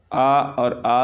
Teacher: आ और आ स्वर हैं, ये दोनों बोले जाते हैं कंठ से